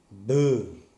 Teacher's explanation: It is a stop, but it is voiced